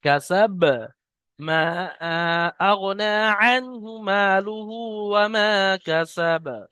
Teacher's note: শেষে বাটাকে আমরা সাকিন করছি এই আয়াত করার কারণে। আর যখন বাকে সাকিন করছি তাহলে হরফে কলকলা পাঁচটির মধ্যে বা একটি, তাই বাকে কলকলা করে পড়তে হবে।